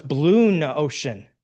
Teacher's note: And Greek grammar says we don't want those vowel sounds to run into each other. And so we put in N in between the words. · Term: movable new